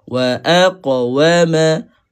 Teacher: Lantunkan, jangan lantun wa akwama, tak boleh lah lantun macam tu kan. Wa aqa, sebab dia huruf sifat dia adalah isti'la, huruf qaf ni kena tebalkan.